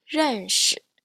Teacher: when you pronounce it, our voice doesn't change in pitch, okay? So it's just a flat and neutral tone.